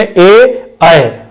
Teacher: कंठ तालव्य, जिनके उच्चारण में कंठ और तालु दोनों की सहायता लेनी पड़ती है, वो कंठ तालव्य स्वर कहलाते हैं